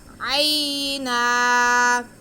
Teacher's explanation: عَشْرَةَ، عَشْرَةَ. عَيْنًا، عین پہ زبر اور یا ساکن، تو یہ یا لین ہو گیا، اس کو بالکل نہیں کھینچنا